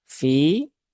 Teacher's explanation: ada ya sukun setelah kasrah, maka ini dibaca dengan kadar panjang 2 harokat ya. Fi, nah, 2 harokat ya, jangan terlalu panjang karena beberapa ada yang kepanjangan ya.